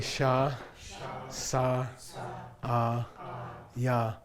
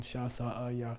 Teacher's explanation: The only common denominator is they're all low tone.